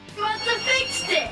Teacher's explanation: reduces the entire word have to a schwa or a sound. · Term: reduction